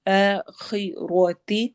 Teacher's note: خا اور را دونوں ہیوی پڑھے جائیں گے. خا تو ویسے ہی حروف مستعلیہ میں سے ہے اور را کے اوپر فتح زبر آ گئی ہے، اس وجہ سے ہم اس کو ہیوی کر کے موٹا کر کے پڑھیں گے.